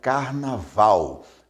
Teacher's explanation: a sílaba mais forte é val, é a última. Então, a palavra é oxítona.